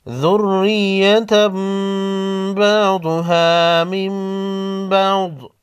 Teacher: تنوین کے بعد با ہے، تنوین کے نون کو میم میں بدل کر غنہ کے ساتھ پڑھیں گے، اقلاب کہتے ہیں